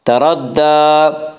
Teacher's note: اذا تردا، تردا کی را کو پر پڑھیں گے، اس کا قاعدہ ہے کہ را کے اوپر زبر پیش آئے تو را کو پر پڑھا جائے گا، را کے نیچے زیر آئے تو را کو باریک پڑھا جائے گا، یا را کے اوپر زبر ہے اسی را کو پر پڑھیں گے۔ تردا، دال کے اوپر کھڑا زبر ہے، کھڑا زبر کو ایک الف کے برابر کھینچ کر پڑھیں گے